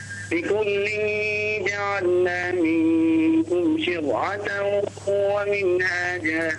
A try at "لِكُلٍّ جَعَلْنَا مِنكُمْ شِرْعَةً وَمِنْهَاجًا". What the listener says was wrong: رقق الراء.